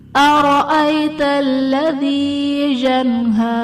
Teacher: ارأیت الذی جنہا، ارأیت الذی میں را پر زبر ہے، را کو پر پڑھا جائے گا، یا ساکن سے پہلے حرف پر زبر ہے تو یہاں پر یائلین کا قاعدہ ہے، اسے ہم نے بغیر کھینچے بغیر جھٹکا دیے نرمی سے معروف پڑھنا ہے۔ جنہا میں نون ساکن کے بعد حروف حلقی میں سے ہا ہے تو یہاں پر اظہار کا قاعدہ ہوگا، یعنی نون ساکن میں ہم غنہ نہیں کریں گے۔